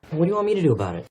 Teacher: we're not pushing out that t sound this is called a flat T and it makes it easier to connect to the next